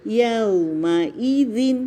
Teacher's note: یو کے لیے ہونٹ پورے گول ہوں گے